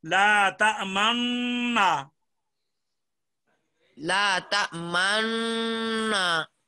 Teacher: جب ناک میں آواز آئے گی تو ساتھ ہونٹوں کو بھی گول کر لو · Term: اشمام